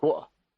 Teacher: It's a common thing that people don't say the T in water